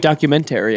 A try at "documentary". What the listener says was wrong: He's changing the emphasis.